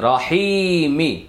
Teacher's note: মাদের হরফের বামের হরফে ওয়াকফ করলে 3 আলিফ টানতে হবে